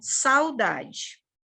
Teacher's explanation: O A vai ser nossa vogal e o U vai ser nossa semivogal. E vai decrescer o som. Por isso que se chama de tombo decrescente. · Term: ditongo